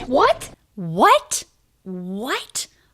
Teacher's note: it really goes up in pitch that's showing a question